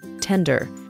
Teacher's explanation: this is a two- syllable word that is stressed on the first syllable